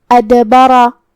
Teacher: با پہ را پہ زبر ہے، تو یہ دونوں حرکات کا دھیان رہے، اور ہمیں را کو بھاری آواز میں پڑھنا ہے کیونکہ اس پہ زبر ہے · کلمت ادبرہ میں یہاں شروعات میں حمزہ قطع ہے، تو یہاں حمزہ کو ظاہر کریں گے، جو کہ دال پہ جزم ہے، تو یہاں بھی دال کا حکم ہے قلقلہ. ہمیں دال کو ہلاتے ہوئے یہ کلمہ کو ادا کرنا ہے